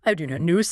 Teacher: draw it out with a sort of fall rise or a long falling tone.